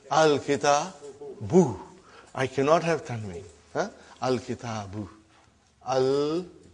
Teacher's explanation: Now you see, as soon as I put al, like a magic, one vowel sign got dropped. Instead of bun, it became bu.